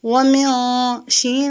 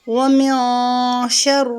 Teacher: نون کی آواز کو چھپائیں گے کیونکہ آگے حروف اخفاء میں سے شین آ رہی ہے